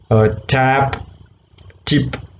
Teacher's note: there is a complete blockage and sudden release so it's a plosive a voiceless alveolar plosive · Tip of the tongue is touching the teeth ridge, therefore it's an alveolar plosive